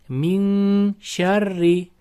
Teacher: nun harfini shni chiqadigan joyga yashirib g'unna bilan o'qiymiz. Ya'niki ixfo qoidasi.